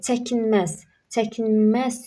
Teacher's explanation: Bu yanlışdır. Çəkinməz, çəkinməz sözündə vurğu sona düşür və üçüncü hecadadır. Bu doğru variantdır.